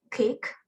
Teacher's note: alveolars and then the word is kick block air flow with the back of the tongue against the soft palate so it becomes velar